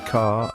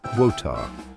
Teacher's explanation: British English often drops the R at the end of words, so try to soften it as much as possible. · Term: soft R